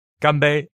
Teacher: So, gambe is the famous toast of China. First tone, first tone.